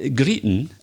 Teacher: Greeting, again, we have this glottal stop. It's very, very common in Scotland.